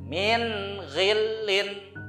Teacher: jadi jelas nun sukunnya itu harus dibaca jelas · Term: idhar